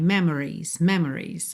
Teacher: Quase sempre a gente reduz tanto esse O que parece que do M vai pro R.